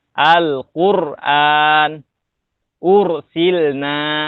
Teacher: harokat sebelum ro sukunnya adalah dhammah, maka dibacanya tebal